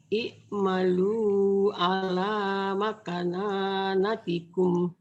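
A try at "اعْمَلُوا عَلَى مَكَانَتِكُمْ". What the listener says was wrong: Makananatikum nanya cuma satu, Bu. Dengerin. I'malu ala makanatikum.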